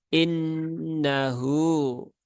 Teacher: nunnya bertasdid maka tunaikan tasdidnya ya gunnah musyaddadah tunaikan tasdidnya ditahan 3 harokat kemudian ada hu di sini ya, ada mat silah ya mat silah qasiroh atau mat silah sugro maka dibaca panjang 2 Dua harokat innahu.